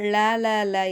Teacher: மேல் நாவின் இரு பக்கம் தடித்து மேல் பற்களின் அடியை தொடுவதால் லகரம் தோன்றும்